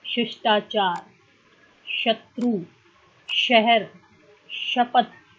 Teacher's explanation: पहले सलगम वाला श, इसका उच्चारण तालव्य से